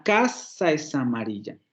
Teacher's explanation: solamente hay dos acentos es decir que solamente hay dos palabras prosodicas casa y amarilla